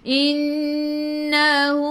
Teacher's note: Tekan ke dalam nun dan dengung. Wajib gunnah, wajib dengung.